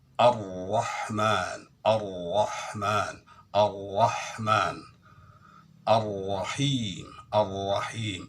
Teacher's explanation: Ro bisanya tebal adalah dengan irtifa'u aqsal lisan ilal hanakil a'la, terangkatnya pangkal lidah ke langit-langit atas.